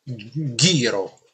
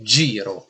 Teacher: Quindi vediamo questi quattro casi che sono, ad esempio, vedete, giro, se interpongo la H fra la G e la I diventa ghiro, un suono più duro, un suono più gutturale, g, ghiro invece di giro che è più squillante